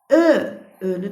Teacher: də söyləyərkən dodaqlarımız önə doğru uzanır. Dodaqlanan saitdir.